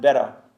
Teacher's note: 그러니까 기본적으로 T가 D로 바뀌었다가 soft한 D에서 better로 바뀌는 겁니다